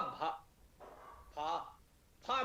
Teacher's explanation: भा बोलेंगे तो हा की ध्वनि आ रही। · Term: महाप्राण ध्वनिया